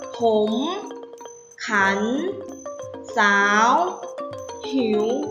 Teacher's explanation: เด็กๆออกเสียงจัตวาแต่ไม่มีรูปวรรณยุกต์จัตวาเลย